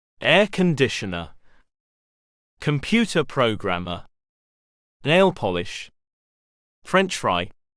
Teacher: similar to the rule for compound nouns the first part of the compound here the first word gets the stress